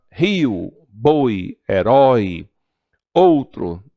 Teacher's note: o ar sai todo pela boca Então temos aí um ditongo oral